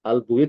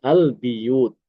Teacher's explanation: Ibnu Amir itu mengkasrahkan huruf ba. Albuyut dibaca albiyut. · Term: mengkasrokan huruf ba